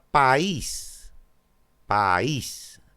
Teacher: dos sílabas la cerrada es tónica va junto a una abierta por lo tanto hiato